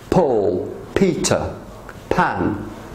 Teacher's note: all peas in England explode